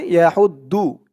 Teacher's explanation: দু বললে দদের জায়গায় দালের উচ্চারণটা চলে আসবে। তো যেহেতু এখানে দদ, তাই আমাদের দদের উচ্চারণটাই করতে হবে।